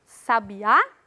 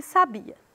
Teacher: a palavra sabiá é oxítona e a palavra sabia é paroxítona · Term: sílaba tônica